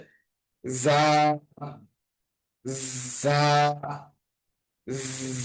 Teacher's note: জা, একদম শীষ দেওয়ার মতো উচ্চারণ হবে